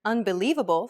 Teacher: do you notice how the lee is accentuated? That's because it's pronounced longer and louder than any other syllable. And this is what we refer to as stress.